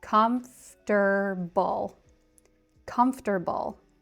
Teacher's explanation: The word comfortable is often tricky for non-native speakers because it looks like it should be comfortable, 4 syllables. But in American English, we tend to say it with just 3.